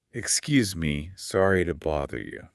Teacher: And the tone, the intonation is so important here. You need a rising questioning sound.